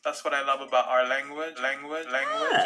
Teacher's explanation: you'll hear that dark l in places where you wouldn't hear it in other varieties